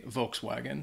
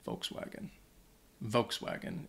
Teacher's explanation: in the US uh a lot of native uh English speakers would say Volkswagen so you'd hear that that W sound in there